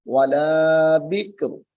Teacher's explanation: وقت میں تنوین ختم ہو جائے گی اور را ساکن ہو جائے گی